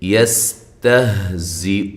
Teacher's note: سین سیٹی کے ساتھ لیکن ہلانا نہیں ہے، تا کو باریک، ہا کو واضح